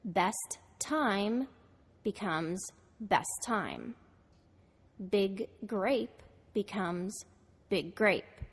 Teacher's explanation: the following word begins in the same or similar consonant sound you will only pronounce that sound once by lengthening or holding the sound